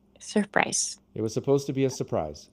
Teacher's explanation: It is spelled surprise, but almost no American English speakers say surprise. They say surprise. They cut the R.